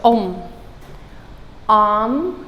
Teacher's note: it's the long o sound but the duration is short